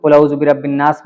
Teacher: الف لام کو ہم لوگ نہیں پڑھتے ہیں، سیدھا نون کو پڑھتے ہیں